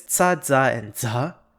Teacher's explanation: Marathi also has the alveolar affricates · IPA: /ts/ /dz/ and /dzʱ/